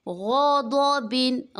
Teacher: غین پر ہے، ضاد بھی پر ہے